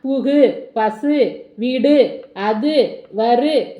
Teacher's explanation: குறையாமல் ஒரு மாத்திரை அளவில் முழுமையாக ஒலிப்பதை முற்றியல் உகரம் என்பார்